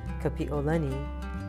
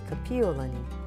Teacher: Said correctly, with a glottal or ʻ okina between the i and the o